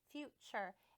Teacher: the T almost has a CH sound when we say it